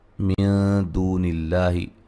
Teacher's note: نون ساکن کا باریک اخفا ہے ، اور را کو موٹا ادا کریں گے، واو مدہ ہے،